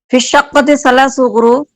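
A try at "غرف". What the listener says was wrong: গুরুফ নাকি গুরফ, দেখি ভুল করেন কেন।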